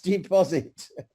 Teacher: when we say in deposit, the second syllable are stressed.